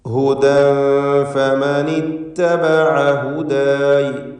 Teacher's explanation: തൻവീനിനെ ഇഖ്ഫാ ഹഖീഖി നൽകി ശേഷം ഫാ വന്നതുകൊണ്ട് അവ്യക്തമാക്കി മണിച്ചുകൊണ്ട് ഉച്ചരിക്കുക.